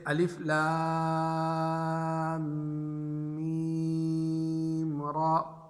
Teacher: میم کو کھینچ کر جب را سے ملائیں گے تو غنہ نہیں ہوگا